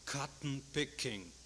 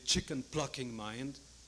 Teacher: Now, cotton-picking and chicken-plucking, they really mean nothing, but they provide so much stop-release, stop-release.